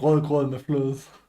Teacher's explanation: The guttural R requires a deep vibration in the throat. The stod, a subtle glottal catch that changes the meaning of words.